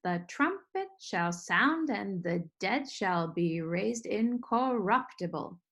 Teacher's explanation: that one is in the feel of three strong weak weak strong weak weak strong weak weak strong